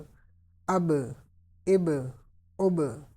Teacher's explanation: Ba is also from Qalqala letters, so we need echo at the end of pronunciation of this letter.